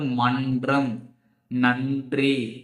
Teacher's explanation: மேல்வாய் அன்ன முன்பகுதி, நாவினுடைய நுனி வந்து மேல்வாயுடைய அன்ன முன்பகுதியை தொடும் பொழுது இந்த ரன்னகரம் உருவாகுது.